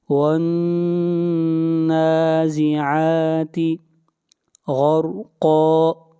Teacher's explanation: والنازعات غرقا، نون کو کھینچ کر پڑھیں گے ایک الف کے برابر، عین کو کھینچ کر پڑھیں گے ایک الف کے برابر، را کو موٹا پڑھیں گے، را سے پہلے فتحہ ہے، قاف کو موٹا پڑھیں گے، قاف حروف مستعلیہ میں سے ہے۔